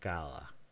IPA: kaða